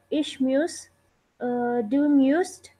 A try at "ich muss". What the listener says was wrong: Ish Moose. There is no umlaut. Just Moose.